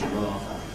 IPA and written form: ˈrɑːvə (rather)